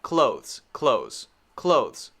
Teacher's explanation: the correct pronunciation should have a very quick th there very very fast